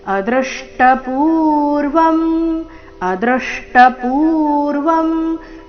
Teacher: ಅದೃಷ್ಟ ಪೂರ್ವಂ ಶಬ್ದದಲ್ಲಿ ದೃ ಮೇಲೆ ಆಘಾತ ಬರಬೇಕು ಅ ಮೇಲೆ ಆಘಾತ ಬರಬಾರದು